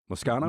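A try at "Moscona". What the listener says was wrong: There's no O on the end.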